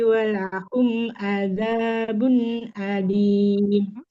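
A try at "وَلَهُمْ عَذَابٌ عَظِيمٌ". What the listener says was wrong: Walahum azabun. Za sama. Ujung lidahnya ke ujung gigi seri atas. Walahum azabun azim. Tidak adim. Azim.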